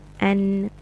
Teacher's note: noon is coming from the tip of your tongue touching the gums